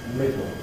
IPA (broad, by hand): ˈmɪdo